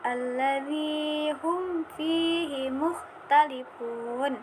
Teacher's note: mim sukun bertemu dengan huruf fa, maka dibaca jelas izhar syafawi